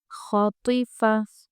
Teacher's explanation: خا پورا آواز سے ہونا ہے پر آواز اس کی ناک میں نہ جائے۔ خا صاف آواز سے پڑھیں۔